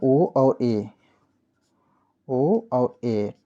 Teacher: उच्चारण करते समय मुख आधा बंद रहता है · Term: अर्धवृत्त स्वर